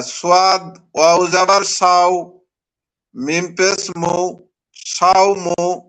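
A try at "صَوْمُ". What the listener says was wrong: মাশাআল্লাহ, ইজরা করেন।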